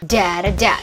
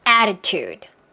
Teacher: 3음절이에요. 그쵸? 모음 3개니까 강세는 맨 앞에 있어요.